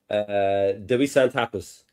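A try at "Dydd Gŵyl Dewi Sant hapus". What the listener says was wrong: Yes, diwrnod Dewi Sant hapus. Yeah, very good.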